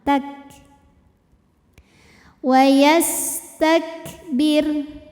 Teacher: dengan adanya sifat lain yaitu sifat hams yaitu keluar angin Nah untuk kafnya yang sukun keluar anginnya itu belakangan